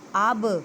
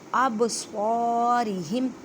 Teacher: با ساکن ہے اس وجہ سے یہاں پہ کلکلا کریں، کلکلا کا مطلب ہلا کر پڑھنا